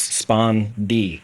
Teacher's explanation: the word spondee is a spondee. It's two stressed syllables